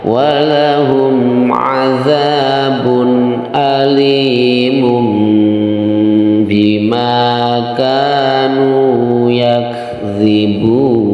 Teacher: Digunakan atau didengungkan di rongga hidung. Jadi cara membacanya iqlab itu adalah didengungkan di rongga hidung